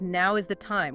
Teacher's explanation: A little W sound can slip in to bridge the gap. Examples she gives now is the time which might sound a bit like now is the time.